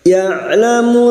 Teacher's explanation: Ya'lamu huruf ain sukun, tawassud dan jahar